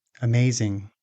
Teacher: Once again, the stress syllable is the second one. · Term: stressed syllable